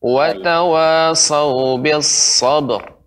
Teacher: langsung dipantulkan ya. Tidak masalah ya. Karena ba adalah huruf qalqalah.